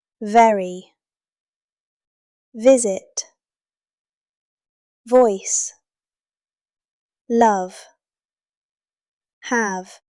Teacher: ship sheep ship sheep Sound three the V sound the letter V Your top teeth touch your bottom lip and you vibrate. Feel the buzzing. That is V.